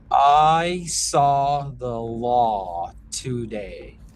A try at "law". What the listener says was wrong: Now the law kind of dropped back in the throat. Can we think a little more lift with that? Law, law, a little more up feeling with the shape. The was a little lazy.